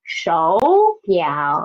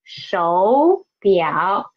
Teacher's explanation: We should change the first third tone into second tone, right?